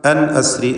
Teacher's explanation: അപ്പോൾ വലഖദ് ഔഹൈനാ ഇലാ മൂസ അൻ അസ്രി ബിഇബാദി എന്ന ദീർഘം നൽകി പാരായണം ചെയ്യുക. അൻ അസ്രി സാക്കിനത്തായ നൂനിനെ ഇൽഹാർ ഹൽക്കി നൽകി മണിക്കാതെ വെളിവാക്കേണ്ടതാണ്. അൻ എന്നതിൽ സാക്കിനത്തായ നൂൻ ശേഷം ഹംസ വന്നു എന്നതാണ് കാരണം.